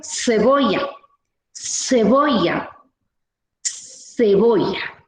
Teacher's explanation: C, Z, S, todo lo pronunciamos como el fonema S o como la consonante S